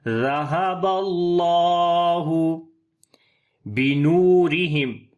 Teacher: نون کو لمبا کریں گے، واو مدہ ہے، را کو باریک پڑھیں گے